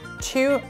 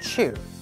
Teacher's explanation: TU sounds like two in American English, and in British English, it sounds like chew.